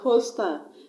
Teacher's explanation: That word hostile has 2 syllables. So I'm going to stress on the first syllable.